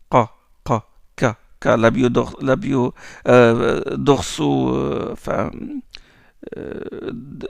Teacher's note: Dorso-vélaire. Vous avez la langue qui touche le haut, enfin le palais enfin le voile du palais, la zone qui est molle.